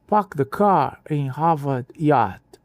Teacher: Elas começaram a imitar o sotaque de elite britânico, matando o R.